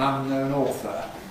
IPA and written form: ˈʌnnəʊn ˈɔːθə (unknown author)